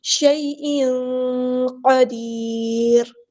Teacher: یہاں پہ دیکھیں مدلین ہو رہی ہے، نرمی سے موڑیں گے، شے نہیں شیء، اور تنوین کی آواز کو یہاں پہ ہم تنوین میں جو نون کی آواز ہے اس کو ہم یہاں پہ چھپا دیں گے، شیء نہیں پڑھیں گے، شیء قدیر.